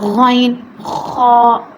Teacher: حلق کے اوپر والے حصے سے ادا ہوتے ہیں، جو پہلا ابتدائی حلق ہے، حلق کا ابتدائی حصہ، وہاں سے غین اور خا نکلتا ہے، ٹھیک ہے۔